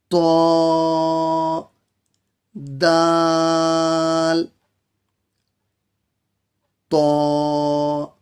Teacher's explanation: زبان کی نوک اوپر کے 2 دانتوں کے جڑ سے تو دال تا ادا ہوتے ہیں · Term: مخرج نمبر 11